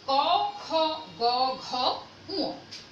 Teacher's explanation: জিহ্বার যে গোড়ার অংশটা আছে সেটার সাথে ওই নরম তালুর অংশটা স্পর্শ করে, খুব আংশিকভাবে, সহজভাবে এই জিনিসটা স্পর্শ করে বিধায় এটাকে বলা হচ্ছে কি? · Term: কণ্ঠ বর্ণ